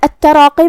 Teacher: کلمت التراقی میں یہاں بھی حرف التا کی تشدید کا دھیان رہے. پھر را پہ زبر ہے لہذا را کا حکم ہے تفخیم. ہم یہ حرف کو موٹی آواز میں پڑھیں گے جو کہ اس کے بعد مد الف ہے.